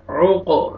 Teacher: قاف قلقلہ double sound آئے گا